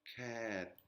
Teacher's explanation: Bo bai mai qui est l'équivalent du B, mais en consonne finale, elle va faire comme un son P, donc ça va faire cap.